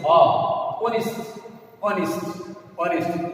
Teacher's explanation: since the consonant H is silent, it doesn't sound. It sounds here, since the H is silent, it sounds an vowel sound, that is honest, honest, honest.